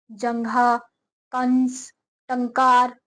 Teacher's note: अनुस्वार के उच्चारण में हवा नाक से निकलती है, इसका चिन्ह बिंदु होता है जो वर्ण के ऊपर लिखा जाता है, जैसे जंघा, कंस, टंकार आदि।